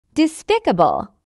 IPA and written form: dɪˈspɪkəbəl (despicable)